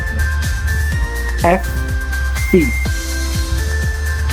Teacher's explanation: Nah, gigi atas penting dalam membentuk bunyi seperti F, dan V. Disebut bunyi labiodental dengan bantuan bibir bawah